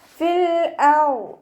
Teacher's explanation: ഹംസത്തുൽ വസ്ൽ വന്നതുകൊണ്ട് ആ യാമദ്ദിനെ കട്ട് ചെയ്തിട്ട് ഉച്ചരിക്കുക